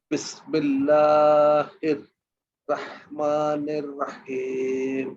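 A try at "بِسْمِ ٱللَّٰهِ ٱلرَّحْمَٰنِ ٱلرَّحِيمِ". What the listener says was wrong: রহমানির, আমরা নের বলি, আমরা নির বলবো। এখানে মাদে হরফ আছে শেষে, মাদে আরজি, 3 আলিফ টানবো। এখানে দেখেন এই যে মিমের উপরে একটা খাড়া আকার আছে, তাহলে এখানে রহমা এক আলিফ টানবো।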